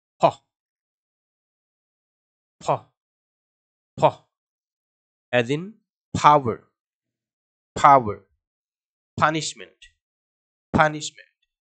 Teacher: ফি এর ক্ষেত্রে দুই ঠোঁট চেপে ধরে জোরে জোরে বাতাস ছেড়ে বলতে হবে